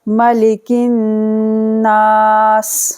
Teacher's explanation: نون پر تشدید ہے، غنہ ہوگا